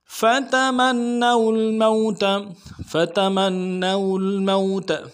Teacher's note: لام کے ساتھ ملانا ہے، لام ساکن ہے، غنہ نہیں ہوگا، موت میں واو لین ہے، بغیر کھینچے پڑیں گے